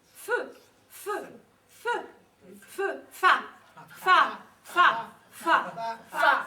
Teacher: La consonne F se prononce en appuyant les dents d'en bas sur la lèvre de dessous.